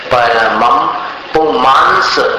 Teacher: म के ऊपर जो अनुस्वार है उसका उच्चारण म के समान